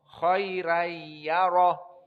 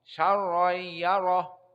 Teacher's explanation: Apalagi ra-nya fathah. Syarra khaira beda. Karena khaira ya-nya sakinah. Jadi dia muraqqaqah.